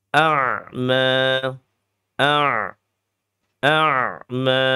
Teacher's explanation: a-nya hamzah qat'inya syiddah bertemu dengan ain yang sifatnya tawasut